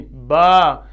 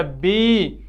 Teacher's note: تو یہ واو یا اور الف کی جو آواز ہے یہ کیسے ادا ہوتی ہے؟ جوف الدہن یعنی منہ کے خلا سے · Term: حروف مدہ